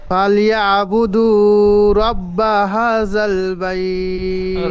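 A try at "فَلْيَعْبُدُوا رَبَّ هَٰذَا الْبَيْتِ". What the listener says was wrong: রব্বা, হা খাড়া যাওয়া একালিপ টান দিয়ে বলেন, একালিপের টান কম হচ্ছে।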